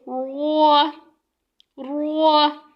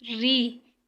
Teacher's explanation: اگر زبر آئے تو ہم پر پڑھیں گے رو، رو، اگر زیر آئے تو ری، مطلب باریک پڑھیں گے